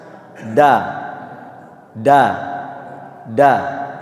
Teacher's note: Huruf da itu disebutkan cara membacanya adalah ujung lidah dengan gusi.